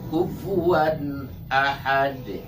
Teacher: nah itu tanwin fathah, di depannya ada alif, maka itu izhar halqi, cepat dan jelas suara tanwinnya.